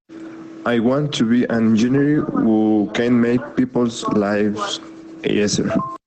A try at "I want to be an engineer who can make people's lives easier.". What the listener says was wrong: En el más fácil pronunciémoslo un poquito más como I, easier, but other than that, that was very good, very good.